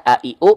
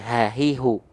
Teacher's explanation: kalau Hamzah a i u pita suaranya menutup Kalau ha besar pita suaranya ngebuka